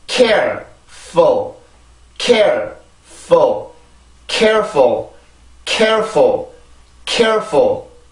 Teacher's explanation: 이 발음을 할 때 절대로 full, full, full 이렇게 되는 게 아니라 full, full 아주 가볍게 발음이 되죠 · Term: 슈아 발음